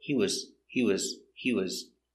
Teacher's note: is not stressed you hear he was he was he was you link the words and it's not stressed he was so it's shorter it's not he was he was he was he was he